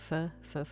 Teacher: so you're connecting your teeth to your lip that's what causes the F sound